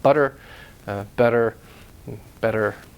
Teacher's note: North American English in media you'll hear that tap T sound it's really a alveolar post alveolar tap